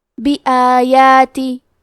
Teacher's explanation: کلمت بآیات میں الف پہ کھڑا زبر ہے اور یا پہ بھی کھڑا زبر ہے تو یہ دونوں مد الف ہے، ہم یہ دونوں مد کو برابر سے ادا کریں گے